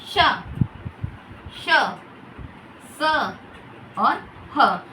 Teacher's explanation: यानी कि जब हम उनका उच्चारण करते हैं जो हवा होती है बहुत तेज गति से बाहर निकलती है और साथ में एक घर्षण पैदा होता है। घर्षण होता है जिसके कारण गर्मी पैदा होती है। · जब हम इनका उच्चारण कर रहे हैं तो हवा बहुत तेज बाहर निकल रही है और अंदर हल्की सी मुख में ऊष्मा पैदा होती है। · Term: उष्म व्यंजन, ऊष्म व्यंजन